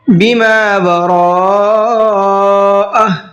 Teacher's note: وَيَكْفُرُونَ را کو منہ بھر کے بھی پڑھنا ہے اور کھینچ کر کے بھی پڑھنا ہے۔ بما وراءہ بما کے میم کو کھینچیں گے، اس لیے کہ یہاں پر الف مدہ کا قاعدہ ہے۔